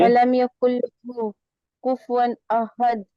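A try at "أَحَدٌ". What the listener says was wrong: आपका कलकला नहीं हो रहा बेटा। कुफुवन अहद, अहद। हाँ ये अहद, हद। आवाज, हाँ आवाज पलट के आ रही है ना।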